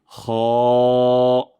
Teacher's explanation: হলক বা কন্ঠনালীর শেষ ভাগ বা মুখের দিকের শেষ অংশ থেকে এই খ আমরা উচ্চারণ করব। অনেক সময় আমরা যখন মাছ খাই মাছ খাওয়ার পর যদি কাটা লেগে যায় তখন আমরা যে সাউন্ডটা করি সেটাই হল খ উচ্চারণের স্থান।